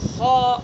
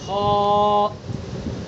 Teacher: خا کا مخرج ہے ادنائے حلق، یعنی منہ کی طرف سے خا کو نکالیں گے